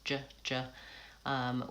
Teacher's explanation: j is a pushed out sound with rounded lips